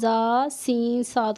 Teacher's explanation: ان 3 حروف زا، سین، صاد کو ادا کرتے وقت سیٹی کی طرح تیز آواز نکلتی ہے، اس لیے ان حروف کو حروف صفیریہ یعنی سیٹی والے حروف کہتے ہیں۔